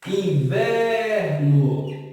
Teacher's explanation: Percebam que novamente a sílaba tônica que se estica é a sílaba do meio.